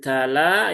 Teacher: Kemudian tala ya, tanya tipis tadi ya, ada hamsnya, lamnya juga tipis